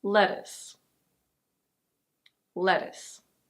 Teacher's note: In American English it's very similar, but the T is a flap T, so it's a deh sound.